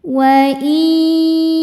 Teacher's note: Berikutnya ada hukum idgham bi gunnah karena nun sukun bertemu huruf ya. Cara bacanya nun yang sukun dimasukkan ke huruf ya, kemudian dengungkan tahan.